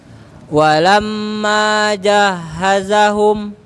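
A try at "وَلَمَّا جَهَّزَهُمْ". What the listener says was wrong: Mimnya ditahan lagi agak panjang.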